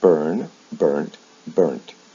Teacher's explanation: the final sound is changed from a D to a T. The original vowel sound doesn't change.